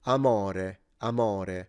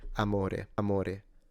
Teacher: And if I had to go accentless on this, I would say amore, amore. The difference is not only the intonation, but the O and the E are closed vowels. So amore rather than amore.